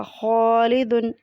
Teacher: اس میں خا موٹا ہے، اس لیے الف بھی موٹا پڑھا جائے گا۔